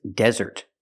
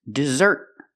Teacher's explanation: The difference is the stress. The first word is desert. The stress is on the first syllable. And the second word is dessert. The stress is on the second syllable.